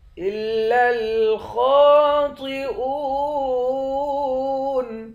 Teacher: خا اور طا دونوں کو موٹا پڑھیں گے۔ حمزے کو واو کے ساتھ ملا کر واو کو ایک الف کے مقدار کھینچ کر پڑھیں گے، آخر میں نون ساکن ہے۔